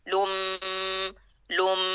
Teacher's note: اب یہاں میم ہے ہونٹ اور ناک. لم، ہونٹوں پہ ہمیں وائبریشن محسوس ہوئے گی غنے کی، اور اس کی صفت ناک میں بھی جائے گی